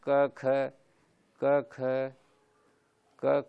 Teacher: क ख जो है ना वो कंठ विवृत रहता है और श्वास निकलता रहता है और घोष नहीं होता है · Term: अघोष वर्ण